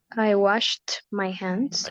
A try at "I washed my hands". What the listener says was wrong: Very good. I washed my hands.